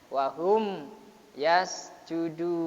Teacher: Jadi syafawi itu tutup bibir kita jelaskannya mimnya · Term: idhar syafawi